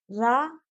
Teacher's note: जब रा का हम उच्चारण करते हैं तो जीभ कंपन करती है, इसलिए लुंठित बोलते हैं।